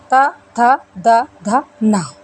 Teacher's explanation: इन व्यंजनों का उच्चारण करते समय हमें जिह्वा को दांतों से स्पर्श करवाना पड़ता है, दांतों की सहायता ली जाती है, इसीलिए इन्हें दंत व्यंजन कहा जाता है।